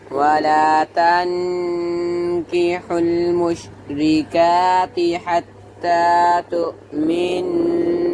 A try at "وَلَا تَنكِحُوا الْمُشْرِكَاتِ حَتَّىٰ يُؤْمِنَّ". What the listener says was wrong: तो नहीं है युमिन, नहीं पढ़ो